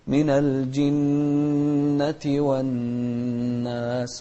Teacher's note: من الجيم عليها كسرة، مو الجنة، من الجنة والناس. النون المشددة هني إذا جاءتنا في القرآن بأكمله نغنها بمقدار حركتين